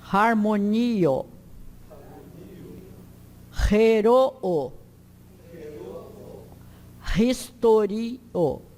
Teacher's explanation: Ro é sempre aspirado como no inglês house.